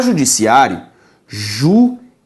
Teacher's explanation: A separação da vogal I com a vogal A mostra a ocorrência de um hiato